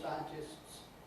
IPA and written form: ˈsaɪəntɪsts (scientists)